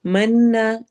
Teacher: नून पे गुन्ना करेंगे और अलिफ मद्दा